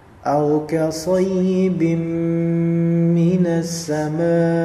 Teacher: Di sini ada hamzah أو untuk حرف hamzah qat' atau ka sayyibin, bacanya sad bukan sin, berarti say sayyibin, sayyibim, ya, kemudian langsung di idghamkan kepada mim. Nah, tanwin di sini ya bertemu dengan mim, maka dileburkan kepadanya dan didengungkan